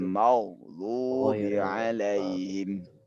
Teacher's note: penyebutan ghain jangan sampai dia terpantul